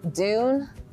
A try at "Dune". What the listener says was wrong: You said it with a J. Dune.